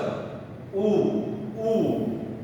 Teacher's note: दोनों ओष्ठ, दो हमारे ओष्ठ वो ज्वाइंट हो जाते हैं